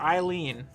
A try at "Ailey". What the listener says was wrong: No, Ailey. Don't add letters to things like that.